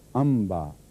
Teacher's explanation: تو میم غنے کے ساتھ ادا کی گئی ہے